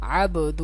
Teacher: یہ دیکھیں عین با زبر عب، یہ حروف قلقلہ میں سے با ہے، اس با کو ہلا کر پڑھیں گے